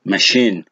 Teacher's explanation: So here the second syllable is stressed.